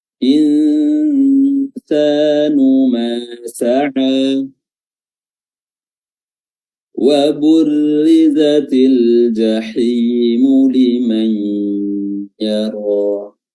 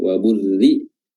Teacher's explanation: huruf ra pada wa burri, ya di sini kita baca tarqiq atau tipis, ya, karena dia berharokat kasrah